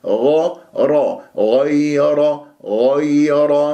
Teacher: والغين يجري فيها الصوت ولا يجري فيها النفس ان اجريت النفس فيها شوي اشمتها فاذا لازم نصاب فيها غار